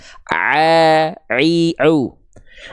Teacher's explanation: Jadi huruf ain itu dilafalkan dari bagian tengah tenggorokan.